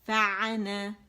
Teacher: کیونکہ یہ مد اصلی ہے، الف ممدودہ ہے، اسے 2 کاؤنٹس پڑھیں گے